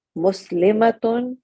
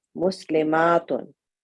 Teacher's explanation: the only difference between the singular and the plural is the shortness and length of a